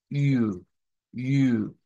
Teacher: Se representa por una Y y es un sonido más bien de una I redonda.